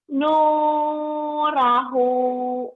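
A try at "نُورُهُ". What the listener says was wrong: Nurohu lah panjang-panjang teuing atuh salif wae nih yang panjang wae. Nurohu.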